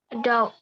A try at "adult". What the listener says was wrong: Nah, ini naiknya tuh di A. Jadi penekanannya beda.